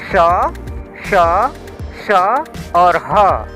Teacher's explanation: हैं जिसको बोलने में ऊष्मा निकलता है ऊष्मा यानी ऊर्जा गर्मी जब हम श श स और ह का उच्चारण करते हैं तो हमारे मुख से गर्म हवा निकलता है तो इन चारों वर्णों को उष्म व्यंजन बोलते हैं उष्म व्यंजन